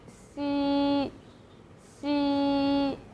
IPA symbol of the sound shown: xī